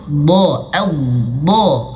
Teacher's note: Dia keluar dengan suara tapi tidak dengan angin.